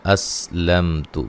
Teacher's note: میم ساکن کا اظہار ہے، غنہ نہیں کریں گے